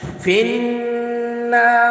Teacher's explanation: نون مشدد پہ غنہ کریں گے، زبان کو بالکل تالو کے ساتھ جوڑ دیں گے، غنہ کریں گے، ناک میں آواز جائے گی